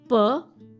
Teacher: जो साउंड आपके दोनों लिप्स को यूज़ करके प्रोड्यूस होते हैं उनको बोलते हैं bilabial sounds. The sounds which are produced by bringing both the lips together.